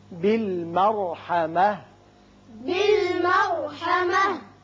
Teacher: را پر ہوگا، تا ہتائیہ ساکن ہو کر ہا بن جائے گی